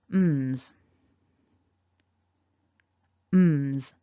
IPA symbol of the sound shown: mz